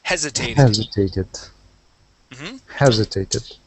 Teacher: Let's go to hesitated. Stress at the very beginning.